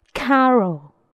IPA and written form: ˈkærəl (Carol)